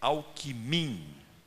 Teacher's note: palavra paroxítona não ganha eleição em Minas Gerais. Tem que ser oxítona, Alquimim.